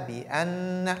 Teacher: nun mushaddada, il faut faire la nasalisation